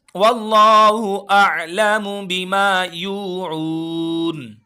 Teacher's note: اللہ کے نام کو موٹا کر کے پڑھیں گے